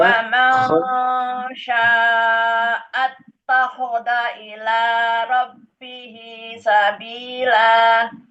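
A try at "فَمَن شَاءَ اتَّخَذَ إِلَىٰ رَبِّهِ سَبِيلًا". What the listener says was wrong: Zalnya juga, zalnya takhadha, za. Faman fa jangan wa.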